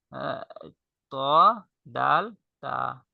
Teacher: ত, দাল, তা জিহ্বার আগা সামনের উপরের দুই দাঁতের গোড়ার সঙ্গে লাগে